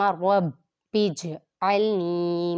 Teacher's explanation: جیم ساکن ہے تو یہاں پہ بھی قلقلہ خوب ظاہر ہوگا